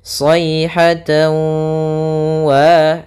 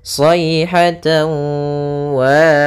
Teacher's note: Cara membacanya yaitu kita masukkan huruf tanwinnya, yaitu suara tan kepada huruf waw sehingga masuk kepada huruf waw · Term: idgham bi gunnah